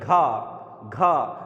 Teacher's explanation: जब आप घा बोलेंगे तो उसमें भी ज़्यादा वायु ली जाएगी और ज़्यादा वायु छोड़ी जाएगी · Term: महाप्राण